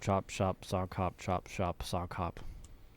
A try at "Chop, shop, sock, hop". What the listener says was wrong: I think you said shock on that last one.